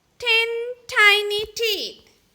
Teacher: the sound made with your tongue behind your front teeth there isn't any voice coming from your throat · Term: letter t